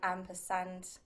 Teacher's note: the m and the p are both what you call bilabials so you make them both with your your lips